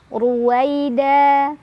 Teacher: da mad iwad karena ada tanwin fathah yang diwaakafkan cara bacanya tanwin fathah diganti jadi fathah dan dibaca panjang dua harakat saja